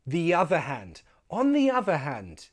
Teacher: So we connect the other with a y sound. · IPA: /j/